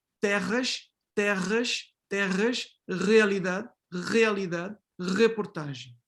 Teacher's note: this particular fricative, uvular fricative, you can identify it in Lisbon